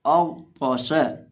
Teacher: हम गैन को भी और ता को भी दोनों को पुर करके पढ़ेंगे क्योंकि ये दोनों हरूफ़े मुस्तालिया में से हैं